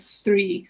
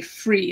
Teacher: so many people swap th for f so they'd say free instead of three